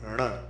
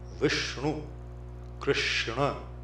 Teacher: The same way you prepare your mouth to say d, like in door, but instead of d, you make it nasal. ण. So the same retroflex of the tongue, flicking of the tongue.